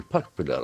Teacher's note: The accent falls on the first syllable.